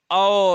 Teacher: देखो गला का भी यूज हो रहा है आपको, ओष्ठ का भी होता है, ठीक है, ओ, ठीक, ओठ भी बन रहे होंगे। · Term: कंठ्योष्ठ